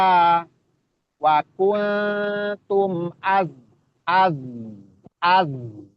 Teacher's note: satu makhraj dia sama ujung lidah posisinya ee mendekat ke gigi seri bawah bagian belakang itu zai satu makhraj dengan sin dengan apa tadi shad ya ah sifatnya juga sama-sama rakhawah dia punya sifat rakhawah jadi az dijalankan dijalankan, dialirkan